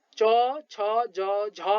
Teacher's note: उच्चारण अवयवले स्पर्श गर्दा श्वास प्रवाहमा घर्षण भई उच्चारित हुने वर्णलाई स्पर्श संघर्षी व्यञ्जन वर्ण भनिन्छ